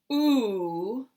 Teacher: If we say [u], now we have a high back position for the tongue